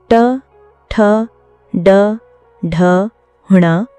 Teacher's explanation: ट एक मूर्धन्य व्यंजन है। मूर्धन्य व्यंजन वे होते हैं जिनका उच्चारण जीभ को उलट कर मुंह के ऊपरी छत के मध्य भाग यानी मूर्धा से स्पर्श करके किया जाता है। ट वर्ग के सभी वर्ण ट, ठ, ड, ढ, ण मूर्धन्य व्यंजन कहलाते हैं।